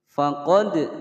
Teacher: Faqad ada dal berharokat sukun dipantulkan qalqalah sughra.